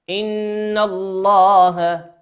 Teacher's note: النون في كلمة إن هي نون مشددة تغن بمقدار حركتين. إذا رأينا النون عليها شدة أو الميم عليها شدة فنقرأها ونمدها بمقدار حركتين.